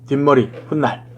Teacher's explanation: 뒷말의 첫 소리 니은 미음 앞에서 니은 소리가 덧나는 것